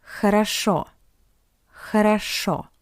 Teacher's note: Because the first two O are unstressed, that's why we pronounce it as A.